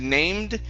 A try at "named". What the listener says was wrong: Okay, give me a d there at the end.